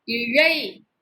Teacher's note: நல்லா நாக்க மடக்கி வச்சு சொல்லுங்க